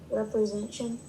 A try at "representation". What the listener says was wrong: that would be without this ta represent you have to have all those sounds